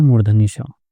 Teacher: हमारी जो जीभ होती है वो मुख के अंदर मूर्धा से टच होती है